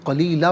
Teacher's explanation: دو زبر کی تنوین وقف میں الف سے چینج ہو جاتی ہے